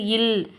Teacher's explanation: மேல்வாயை நாக்கின் ஓரங்கள் தடித்து தடவுவதால் பிறக்கிறது